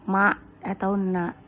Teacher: Suara berdengung yang keluar dari pangkal hidung hurufnya adalah ma atau na. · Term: Gunah